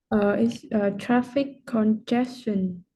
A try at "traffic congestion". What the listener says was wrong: Good pronunciation.